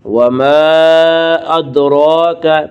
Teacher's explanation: را کے اوپر کھڑا زبر ہے، کھڑا زبر کو 1 الف کے برابر کھینچ کر پڑھیں گے